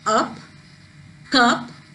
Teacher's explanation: for a very short duration we pronounce this a sound but when we pronounce the words like up cup the uh sound is elongated